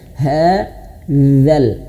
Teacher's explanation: ujung lidah menyentuh ujung gigi seri atas.